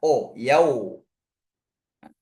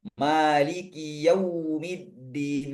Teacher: Di sini ada wau sukun. Wau sukun ini dalam bahasa Arab bunyinya u bukan bunyi o. Nah, terkadang saya temukan itu bacanya o yau.